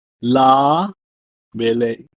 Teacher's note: the letter hey is absorbed